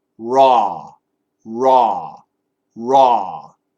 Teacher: It starts up on top with the R and ends down below with the AW.